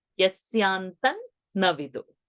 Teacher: Instead of saying tam, Anuswara's makara, you are going to say nakara, because the next alphabet is na, and for that the Anunasik is na, so Anuswara is becoming na.